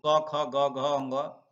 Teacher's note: तो क में मात्रा क की ध्वनि कंठ से निकलती है तो क ख ग घ यह सभी कंठ ध्वनियां है · क की ध्वनि कंठ से निकलती है तो क ख ग घ यह सभी कंठ ध्वनियां है अगर